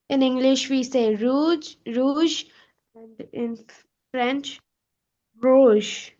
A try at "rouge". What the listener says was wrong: that's better, but still we need to have that tongue back a little farther back in the throat.